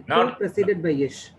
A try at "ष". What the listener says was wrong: Not ish. The ish is wrong. Wrong we are saying ish. When you say ish, you are adding bubble to it. You have to say Shakara only. Tavarga preceded by Shakara.